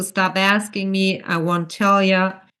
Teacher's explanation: pitch down, because it's a statement and not a yes or no question